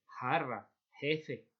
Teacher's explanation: Aspiración del sonido J, jarra, jefe, ¿vale? Como una H